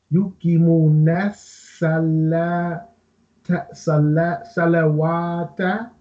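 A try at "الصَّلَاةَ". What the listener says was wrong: Salata. Wow is written with gray color. This means it is ignored. Salata. And is for lam, not for wow.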